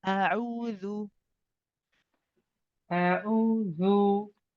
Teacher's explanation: I want you to circle the lips for the dhu, so that you're not saying dhu, you're saying dhu. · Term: clear dhamma sound